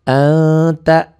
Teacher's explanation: Kalau bukan huruf idhar berarti n-nya berubah jadi eng. N-nya bunyi nun matinya berubah ada eng-nya. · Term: ikhfa